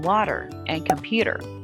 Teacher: Sometimes T sounds more like a D, as in water and computer, and sometimes it's not pronounced at all, as in often and wanted.